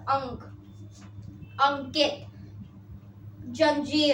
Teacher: यह अनुस्वार है इसका उच्चारण ध्वनि नाक से निकलती है